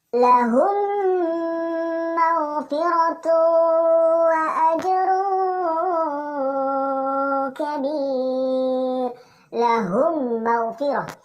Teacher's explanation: Di situ mim sukun ketemu dengan huruf mim. Maka seolah-olah kita ingin menyebut huruf mim, namun kita tidak ucap secara sempurna dan kita dengung sebanyak 2 sampai 3 harakat. · mim sukun dan juga huruf mim digabung dan kita dengung sebanyak 2 sampai 3 harokat. Namun dalam penyebutan huruf mim tidak diucapkan secara sempurna. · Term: idgham mimi